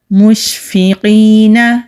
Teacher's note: شین جب ہم ادا کرتے ہیں تو آواز منہ میں پھیلتی ہوئی آئے گی۔